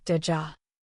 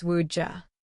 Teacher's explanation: Would you becomes woodja. Here, the T or D sound slides into a CH or J sound because it's easier to pronounce quickly